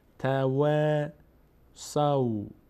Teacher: فتحه بعدش الف صدای آ میگیره اما پر نمیشه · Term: باریک خوانده